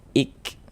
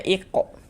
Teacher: Jadi ini huruf kafnya dia sukun. Nah, jadi ketika kita mengucapkannya itu ada nafas yang mengalir. Ik seperti itu. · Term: sifat hamas